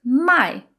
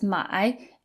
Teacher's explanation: So 买 is third tone and 卖 is fourth tone. So the fourth tone is more forceful and it sounds a little bit angry. And the third tone has kind of a dip in the middle.